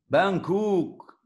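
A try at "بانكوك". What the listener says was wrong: Kan nggak ada O ya, Bangkok nggak ada Bangkok. Bangkok. Bangkok.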